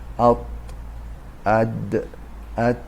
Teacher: نوک زبان همراه با ریشه دندان‌ها دندان‌های پیشی آرو آرا بالا حرف دال و تا و طا خارج می‌شود